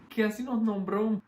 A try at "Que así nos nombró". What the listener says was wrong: Así nos nombró. Same with nos nombró. That S is there. I like that it's not pronounced, but it's still missing the aspiration.